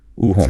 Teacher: In American English, this is typically a diphthong, a gliding vowel that starts towards O and moves towards U.